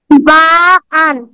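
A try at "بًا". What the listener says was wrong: হরকতের উচ্চারণ তাড়াতাড়ি পড়তে হয়, কোনো টান টুন এখানে নাই। এটা হলো বা, এটা হলো বাহান। দুই জবর থাকলেই, দুই জের থাকলেই, দুই পেশ থাকলেই তখন একটা নুন যুক্ত করে পড়তে হয়।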